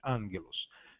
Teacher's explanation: Sempre que houver, então, o G antes de kappa, zeta e praticamente Ra, o gama tem o som de N. Angelos, quando eu tenho dois Gs, dois gamas, angelos, né? O primeiro G se torna N, pronuncia-se angelos.